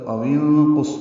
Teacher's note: نون ساکن پہ اخفا ہوگا کیونکہ نون ساکن کے بعد قاف حروف اخفا میں سے آ رہا ہے